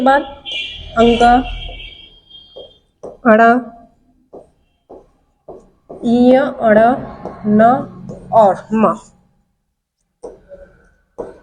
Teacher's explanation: ये नासिक के वर्ण कहलाते हैं क्योंकि ये नाक की सहायता से बोले जाते हैं।